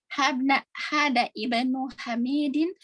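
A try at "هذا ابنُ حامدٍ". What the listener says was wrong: Ini langsung hamzahnya tidak dibaca. Hamzahnya tidak bisa. Hada banu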